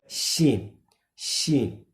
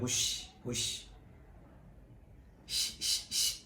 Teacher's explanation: شین کا مخرج زبان کا بیچ اور اوپر کا تالو، جس طرح کہ جیم کا مخرج تھا زبان کا بیچ اور اوپر کا تالو، یہ آپس میں ٹکرائیں تو اس سے شین ادا ہوتی ہے۔